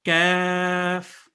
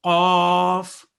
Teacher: کاف کا مخرج قاف کے مخرج سے تھوڑا ہٹ کر منہ کی جانب ہوتا ہے